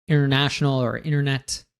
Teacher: when we have this NT, oftentimes we just pronounce the N